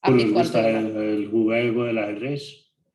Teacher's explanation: este es el sonido de la zona de Antioquia, en donde la S no se pronuncia como S